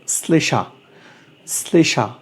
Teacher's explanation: শ্লেষা আমরা লিখেছি তালব্য স দিয়ে, বলছি আমরা দন্ত স দিয়ে